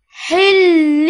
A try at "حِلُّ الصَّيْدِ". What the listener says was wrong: اس میں آواز جاری تو رہا ہے لیکن وہ زیادہ زور مناسب نہیں. آواز تھوڑی جاری رہتی ہے، زور نہ دیا کریں، جاری رہنا ہو رہا ہے اور زور دینا ہو رہا ہے.